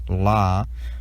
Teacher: the voiced alveolar lateral approximant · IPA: /l/